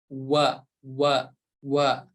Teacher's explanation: Huruf waw tadi udah kita jelaskan bahwa tempat keluarnya dari asyafatain. Kedua bibir kita.